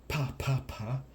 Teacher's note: Um, uh, to quickly discuss the phenology, like I said, it represents what we call the letter P, and that is a bilabial pllosive, which means we use both our lips to make a burst of air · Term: bilabial plosive